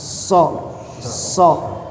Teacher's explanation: ujung lidah ke gigi bawah. Jadi akar gigi bawah. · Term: makhraj so